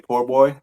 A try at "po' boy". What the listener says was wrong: There ain't no R. There ain't no O R at the end. It's Poboy.